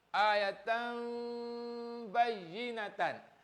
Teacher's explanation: Masukkan nun tanwin ini kepada bunyi mim. Tukarkan tan ni kepada mim, tam.